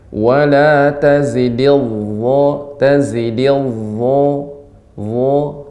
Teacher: Kemudian za, ya, wo itu sama makhrajnya dengan za dengan wo makhrajnya sama, bedanya wo ini tebal, sifatnya isti'la naik